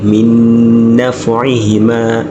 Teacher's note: Owulira nti nuuni eno eyingira mu nuuni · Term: idghaamu